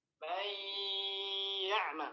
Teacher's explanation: Karena naqis, maka para ulama membacanya dengan menyisakan sifat huruf nun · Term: idgham naqis